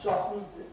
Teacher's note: with the word ‘soften’ [ˈsɒfn̩], you know, I’ve hardly ever heard anybody put the [t] in.